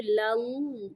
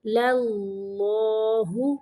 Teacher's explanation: پہلا لام باریک پڑھیں گے، لل، دوسرا لام جو ہے وہ موٹا پڑھیں گے